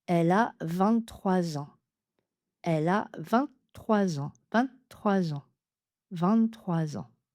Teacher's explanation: Quand 23 ou 23 est suivi d'un nom qui commence par une voyelle, on va faire la liaison en parce que 3 se termine par un s et quand il est suivi d'un nom qui commence par une voyelle, on fait la liaison en Z.